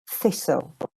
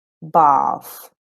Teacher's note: you make the sound, okay, without using your vocal cords, as in thistle.